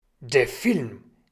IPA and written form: deːɐ̯ fɪlm (der Film)